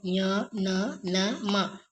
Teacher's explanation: ಅನುನಾಸಿಕ ಅಂದರೆ ಮೂಗಿನಿಂದ ಉಚ್ಚಾರಣೆ ಮಾಡ್ತಕ್ಕಂತ ಅಕ್ಷರಗಳು ಇವು ಞ ನ ಮ ಉಚ್ಚಾರಣೆ ಮಾಡುವಾಗ ಏನಾಗುತ್ತದೆ ನಾಸಿಕದಿಂದ ಉಚ್ಚಾರಣೆ ಆಗ್ತಾ ಇದೆ ಇಲ್ಲಿ